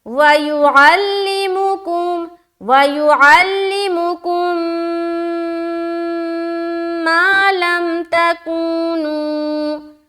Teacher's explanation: جب بھی میم ساکین کے بعد دوسری میم آئے تو دونوں میم کو ملا کر غنہ کے ساتھ پڑھا جاتا ہے جو کہلاتا ہے ادغام شفوی کا قاعدہ.